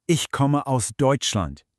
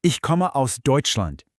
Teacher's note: Did you hear how my voice dropped on Deutschland? That falling tone is exactly what we're talking about.